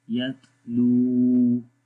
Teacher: लंबा करेंगे वाव को क्योंकि वाव के ऊपर जज़म है और उससे पहले पेश है